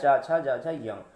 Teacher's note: जो चा वर्ग होता है ये तालु से उच्चारण होता है, तालव्य कहलाता है